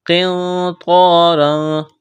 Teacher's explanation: قاف کو موٹا کرنا ہے، نون ساکن کے بعد طوا ہے، اخفا کریں گے، یہاں پر طوا کو موٹا کرنا ہے